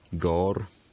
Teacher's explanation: In the Middle English period, the vowel raised and rounded